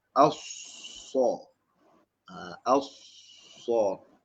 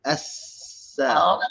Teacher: As-so. Kena bunyi sofir tu, bunyi bersiul.